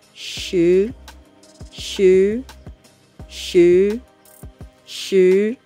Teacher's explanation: it is a rising tone not the falling tone